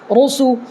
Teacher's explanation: یہ را کو پر پڑھنا ہے، اس لیے کہ را کے اوپر پیش ہے